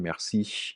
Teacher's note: The lack of secondary palatalization on the final high vowel